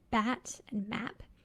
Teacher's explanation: there are trap class words like bat and map that are pronounced with a everywhere